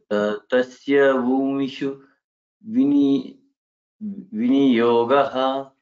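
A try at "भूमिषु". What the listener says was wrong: Bhumishu. Sha should be little. Try it again.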